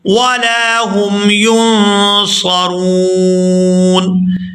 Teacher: یہاں لام کو الف مدہ کی وجہ سے کھینچ کر ادا کریں گے